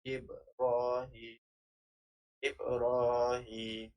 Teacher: menunjukkan kepada qalqalah sughra, qalqalah kecil, dan dibunyikan huruf ba secara halus, huruf ba mati secara halus dengan bacaan Ibrahim, Ibrahim.